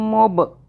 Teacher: اب اس میم کے اوپر تشدید ہے تو ہم میم کو بھی ہولڈ کریں گے ناک میں، منہ میں 2 سیکنڈ کے لیے رکھیں گے. ب، با قلقلہ کا حرف ہے، اس پہ ہم نے جھٹکے سے پڑھنا ہے.